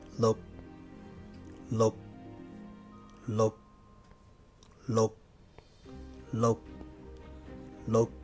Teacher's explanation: The K is muted at the end, so don't say K.